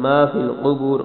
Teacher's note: سے پڑھنا ہے، را کو موٹا پڑھنا ہے، ما فی القبور قاف کو موٹا، آگے را کو بھی موٹا پڑھنا ہے